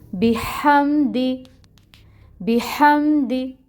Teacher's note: دال کے نیچے کسرو زیر ایک حرکت، 1 کاؤنٹ، بحمدی، بحمدی، دال کی زیر کو لمبا بالکل بھی نہیں کھینچیں گے۔